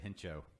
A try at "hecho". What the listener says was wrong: You said Hencho, correctly pronounced Echo. The H is silent. So, and you said encho, but there's